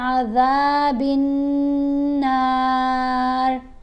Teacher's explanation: रा को बारीक पढ़ेंगे, मोटा नहीं पढ़ेंगे, क्योंकि रा के नीचे ज़ेर है